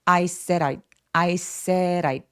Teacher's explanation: I said의 D는 모음 사이에 끼어 있어서 water 할 때처럼 굴러가는 소리를 낼 수 있어요